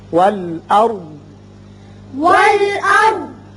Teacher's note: را ہم پر پڑھیں گے اس لیے کہ اس کے پچھلے حرف پر زبر ہے